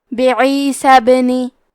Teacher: کلمت پہ عیسیٰ کے بعد حرف الباء کو پڑھیں گے، کیونکہ یہاں با پہ جزم ہے تو یہاں با کا حکم ہے قلقلہ، لہذا ہم یہ حرف کو ہلاتے ہوئے یہ کلمہ کو پڑھیں گے